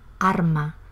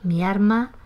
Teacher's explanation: en Andalucía en general el resultado es la confusión, digamos, a favor de R.